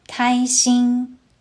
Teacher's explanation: 开 uses the first tone. 心 also uses the first tone.